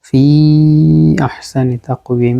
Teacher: এখানে হচ্ছে মধ্যে মুনফাসিল, মদের হরফের পরে হামজা আসছে আহসানি অপর শব্দে